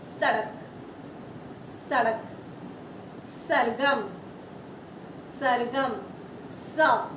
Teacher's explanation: आप बोल के देखिए, स। हमारी जीभ ऊपर के दांतों के पीछे टच नहीं करेगी, हमारी जीभ ऊपर तक नहीं जाएगी, सिर्फ नीचे वाले दांतों के पीछे जो है उसको टच करेगी।